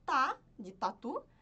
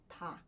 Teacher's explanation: É como se você fosse pronunciar o d mas soltando o ar